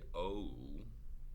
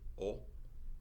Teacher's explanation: in spanish we don't say oh we say o it's not a diphthong